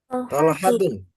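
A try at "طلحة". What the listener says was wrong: Tolhatu. Bukan tolhatun. Ya, bukan berakhiran tun, tapi tu saja. Seperti yang ada di keterangan ini nomor 9 ya, di atas.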